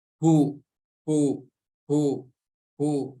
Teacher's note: di sini huruf H-nya berharokat dhammah, maka cara menyempurnakannya dengan memonyongkan kedua bibir.